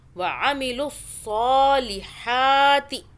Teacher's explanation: صاد کو اور ہا کو کھینچا، ایک الف کے برابر اوپر کھڑا زبر ہے. وعملوا الصالحات، عین کو حلق سے، صاد کو صو پڑھنا ہے، سین کی آواز میں نہیں پڑھنا.